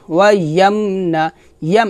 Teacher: এখানে কিন্তু গুণ্য হবে না কারণ এটা হচ্ছে মিম সাকিনের ইজহার